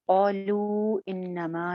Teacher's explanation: ایک جگہ مد آ رہی ہے قالو پہ حمزہ کی وجہ سے